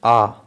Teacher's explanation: উচ্চারণ করলে জিহ্বার অগ্রভাগ একদম নিম্নে অবস্থান করবে